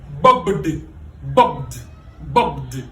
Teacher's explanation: Il y a cette vibration-là. Donc le ED est fini par de, pas T, mais de. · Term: voiced